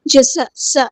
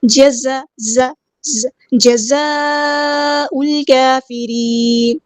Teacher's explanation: زا کو باریک نرمی سے ادا کرنا ہے ، جزا سا ایسے نہیں کرنا، زیادہ سٹی میں سین کی